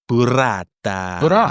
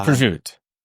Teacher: Some Italians, they drop the final vowel. Yeah, I think it's a Southern Italian thing.